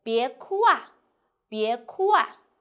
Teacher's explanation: syllable end with u, ao, yao plus a. It will be changed to wa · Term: change of a